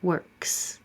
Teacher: Work, voiceless. So keep your voice off, and it's just an S.